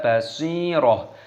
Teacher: Basiroh, basi, sodnya ini dimatikan, ada ya-nya sukun, maka sodnya dipanjangkan dibaca basiroh. Taknya tak marbutoh, ketika berhenti maka diganti dengan huruf ha, dimatikan dibaca basiroh.